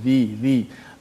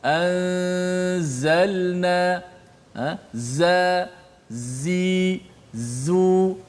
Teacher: Dia keluar daripada antara kedua-dua gigi kita, keluar sifat safir tu apabila menekan makhraj huruf zai. So sifat safir itulah suara desiran yang kuat.